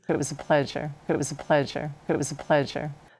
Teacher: The S in pleasure is pronounced as zh.